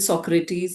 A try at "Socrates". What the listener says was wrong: Socrates, there's no I. Socrates, break the word. Socrates. Socrates.